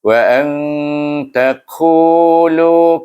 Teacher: Saya baca 2 sekali supaya yang pertama ini ada hukum dia, iaitu dia berkaitan dengan kalimah yang kedua bermula dengan huruf ta, itu huruf ikhfa. Maka nun sukun bertemu dengan huruf ta, kita baca dengan ikhfa hakiki